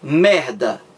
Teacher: quando você tenta pronunciar o M de merda, você está encostando o lábio superior no inferior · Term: consoante bilabial